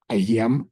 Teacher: ஐயம் என்று கூறுகின்ற பொழுது அங்கே ஐ என்ற எழுத்து முன்னுக்கு வருகின்றபடியால் 1.5 மாத்திரையாக இருக்கும்